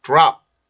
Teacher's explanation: 우리나라의 피읍 발음 정도로 생각을 하시면 돼요. 근데 이제 음절 끝에 있기 때문에 공기를 여기에서 터트리지 않고 그냥 막아주고서 소리를 끝내주면 되죠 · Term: 피 발음